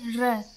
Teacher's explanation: थोड़ी सी जीभ हमारी ऊपर को जाके और थोड़ा लुठित यानी मतलब थोड़ा गोलाई में हो जा रही है